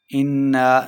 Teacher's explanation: اِنَّا نون مشدد ہے، غنہ کر کے پڑھیں گے، اوپر ساتھ مد ہے تو اسے لمبا کر کے پڑھیں گے۔